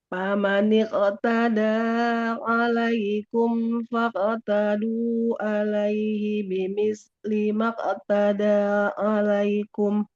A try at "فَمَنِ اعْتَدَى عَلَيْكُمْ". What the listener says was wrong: Oke, untuk bagian sini dia panjang pendeknya juga bagus. Nah, tapi huruf ain sukun jangan seperti kaf. Jangan pamanik. فمن اعتدى عليكم فاعتدوا عليه. Nah, jadi bukan famanik. فمن اعتدى.